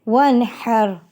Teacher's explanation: نون ساکن میں غنہ نہیں کرنا، کیونکہ نون ساکن کے بعد حروف حلقی کا ہا آ گیا ہے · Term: اظہار کا قاعدہ